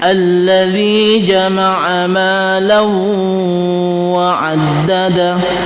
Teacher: ada fathatain bertemu dengan waw, itu idgham bi gunnah. Memasukkan huruf waw itu dengan dengung.